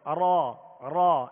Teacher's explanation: را کو ادا کرتے ہوئے اس کی آواز میں کپ کپاہٹ سی پیدا ہوگی. لیکن زیادہ اگر کپ کپاہٹ پیدا ہوگی تو ایک را کی جگہ کئی را پیدا ہوں گی، جیسے را یہ بھی غلط طریقہ ہے اور را یہ بھی غلط طریقہ ہے.